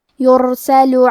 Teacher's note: کلمت یرسلو میں حرف را کو موٹی آواز میں پڑھیں گے، یہاں را کا حکم ہے تفخیم